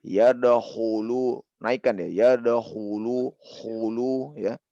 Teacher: Kho di sini tebalkan. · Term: huruf isti'la